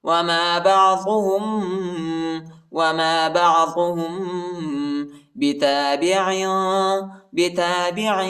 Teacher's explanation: میم ساکن کے بعد با یہی ادھر ہم اخفا کریں گے